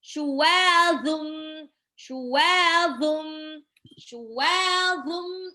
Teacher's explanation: Ujung lidah bertemu dengan dua gigi di atas. Mirip dengan zal tapi lebih tebal dikit. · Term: zo